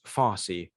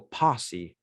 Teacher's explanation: the labial Dental sound becomes bilabial · The labial dental f sound becomes bilabial p, which is an extremely common phonetic shift in the Austronesian languages.